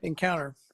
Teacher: so you can eliminate the t